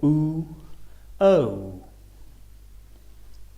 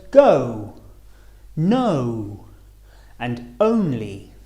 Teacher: starting on the uh and finishing on the o or o o as in the words go no and only